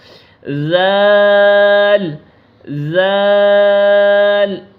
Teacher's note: زبان کا سرا اور سامنے والے اوپر کے دو دانتوں کے اندرونی کنارے سے، زال۔ آپ پڑھ کے چیک کریں زال کو، زبان کا سرا اور سامنے والے اوپر کے دو دانتوں کے اندرونی کنارے سے، زال زال۔